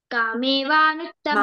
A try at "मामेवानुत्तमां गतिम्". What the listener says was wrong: మామేవానుత్తం. నువ్వు కామేవా అంటున్నావు. కంటిన్యూ చేయి. మామేవా.